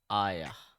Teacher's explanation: So the round ta is actually turning into ha when we stop.